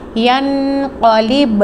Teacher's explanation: اب یہاں پہ با ساکن پر قلقلہ ہوگا